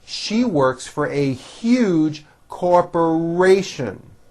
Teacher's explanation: 4 syllables. The third syllable has a very strong R.